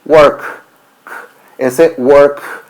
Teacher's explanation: el último sonido de esta última consonante no nos da una vibración en la garganta